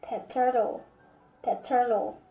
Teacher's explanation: So there's no pause between pet and turtle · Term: germinates